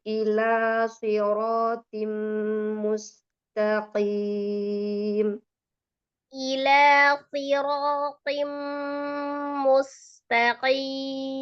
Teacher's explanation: Sad, ra, ta, tebal semua itu.